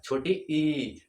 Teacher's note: छोटी ई का उच्चारण हम लोग करेंगे तो जीभ का जो है अगला भाग उठेगा जैसे छोटी ई देखिए थोड़ा सा ऊपर उठ रहा है छोटी